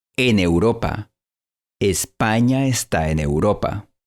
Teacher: En la frase en Europa, la N y la E se fusionan por completo. El resultado es la sílaba neu.